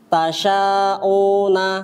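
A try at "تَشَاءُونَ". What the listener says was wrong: Panjangkan 4 harakat.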